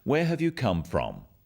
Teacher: Notice also the falling tone with these questions